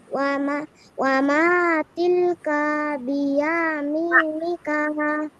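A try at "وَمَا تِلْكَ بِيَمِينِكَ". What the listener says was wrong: হুজুর কাতে টান দিল। হ্যাঁ দিছে, টান দিছে।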